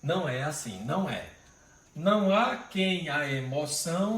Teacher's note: a gente junta uma vogal átona de final de palavra com a inicial da outra, então dá um som só